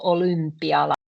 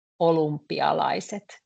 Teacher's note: it's quite difficult for us to say first O when the tongue is back, O, and immediately after that you have to say U.